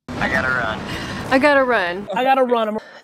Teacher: in a very informal conversation, the VE, I've, is also deleted, resulting in I gotta.